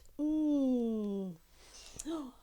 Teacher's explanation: right at the back, tongue right at the back